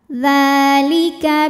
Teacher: mad tabi'i muqaddar karena dzal berharokat fathah panjang, maka dzal panjang 2 harokat.